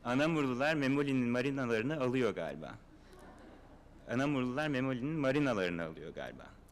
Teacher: With nuclear stress on marinalarını, within the direct object.